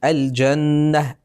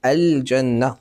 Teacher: تلاحظون أن اللام ظاهرة، الجنة ظاهرة